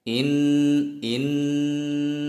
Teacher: Inna itu harus ditahan dan didengungkan masuk dengung itu terasa mendengung di bagian hidung